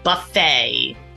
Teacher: It is not pronounced buffet. The T is silent. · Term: silent T